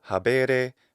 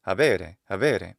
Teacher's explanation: He adds a degree of lenition to the intervocalic B.